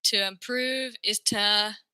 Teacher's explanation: most Americans are going to change this to a ta